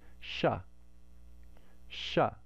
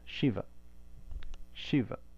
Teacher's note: most people say shiva correctly because it's a palatal sibilant and that's what we're used to in english